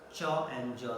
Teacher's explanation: they are affricate because the release is not sudden but slow release. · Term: palato-alveolar affricates